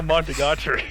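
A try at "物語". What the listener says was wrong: Monogatari. It's Monogatari. Yeah, you almost said Mon again.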